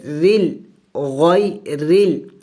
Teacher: جب را کے نیچے زیر ہو تو اس وقت را کو باریک پڑھی جائے گی، را کو باریک پڑھی جائے گی جب را کے نیچے زیر ہو۔